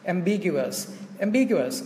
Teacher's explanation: Thì trọng âm nó rơi vào âm b.